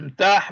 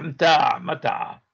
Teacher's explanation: تطورت بعدين الحاء اللي يعتبر كلفظ مهموس إلى لفظ مجهور اللي هو العين